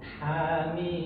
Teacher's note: Nah, perhatikan huruf ha dari tengah tenggorokan.